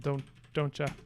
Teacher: the sounds become closer together and in this case they sort of fuse and become one from tia to cha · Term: assimilation